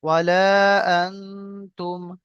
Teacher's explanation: আলিফ জবর লা ওয়ালা হামজা নুন জবর আন তামিম পেশতুম আনতুম এখানে নুন সাকিন তারপরে কি এসেছে হুরুফে একবার 15টি অক্ষরের মধ্যে তা এসেছে এখানে গুণনা হবে একালি পরিমাণ গুণনা করে পড়তে হবে